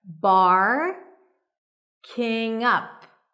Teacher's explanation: The stress is on up. Barking up the wrong, connect those two words together.